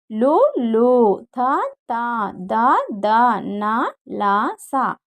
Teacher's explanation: దాంత్యములు దంతముల నుండి పుట్టినవి దాంత్యములు